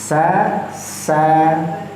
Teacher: sa itu desisan tadi yang kita bisa bilang di rongga bagian depan